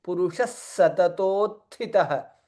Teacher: Visarga followed by Sakara, hence Sa becomes double there.